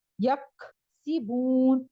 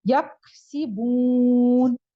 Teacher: قلقلہ نہیں ہمس ہلکی سی آواز نکلتی ہے کاف ساکن اور تا ساکن کے ساتھ